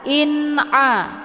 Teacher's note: dengan izhar Hakiki atau juga disebut dengan izhar halqi cara bacanya nunnya dibunyikan secara jelas atau jelas bunyi n-nya cukup ditekan saja tidak perlu ditahan · nunnya dibunyikan secara jelas atau jelas bunyi n-nya. Cukup ditekan saja, tidak perlu ditahan. In'a, ya. Hukum bacaan izhar hakiki dibacanya jelas tiada berdengung.